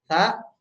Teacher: Sa dia sama seperti za, pangkal lidahnya itu di bawah tapi ditiup. Ya, jadi anginnya berasa keluar, bukan getaran yang keluar ya.